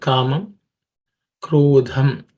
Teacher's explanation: it has to be aspirated with some extra air and stress